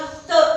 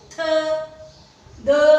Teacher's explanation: जब हम त वर्ग का उच्चारण कर रहे हैं तो जीभ किसको छू रही है, दांतों को। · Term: दंत्य